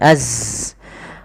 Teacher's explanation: Bukan alirkan, ya, sifat zai. Zai itu termasuk sifat jahar, yaitu nafas tertahan, tertahan, tapi mengalir suaranya